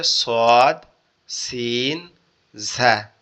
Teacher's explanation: জিহ্বার আগা, নিচের দুই দাঁতের আগার সঙ্গে লেগে উচ্চারিত হবে